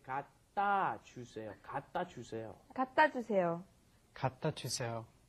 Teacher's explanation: Yes, right here, because there is no open space, there's no vowel in front of the consonant, it comes up against another consonant, it gets kind of swallowed. The sound doesn't come out.